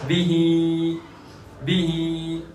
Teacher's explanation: با پر بالکل نہیں رکیں گے، سیدھے ہا پر اور ہا کو ایک الف کے برابر کھینچیں گے اس لیے کہ اس پر کھڑی حرکت ہے اور کھڑی حرکت یہ حرف مدہ کے قائم مقام ہے۔